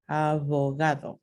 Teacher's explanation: Próximo sonido seminuevo, v. El punto de articulación es bilabial y se pronuncia, es un alófono que se pronuncia así entre vocales, como en la palabra abogado, abogado. · Punto de articulación es dental y aparece entre vocales, como vemos aquí, es la última consonante de la palabra abogado, abogado.